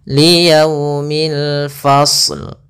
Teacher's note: Kemudian pada lafal yaumil di sini ada alif lam qamariyah, yaitu alif lam yang kita tulis dan kita baca dengan jelas suara lamnya.